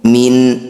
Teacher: nun sukun bertemu Hamzah disebut bacaan izhar halq bunyi Nun sukunnya dibaca dengan jelas tanpa dengung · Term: izhar halki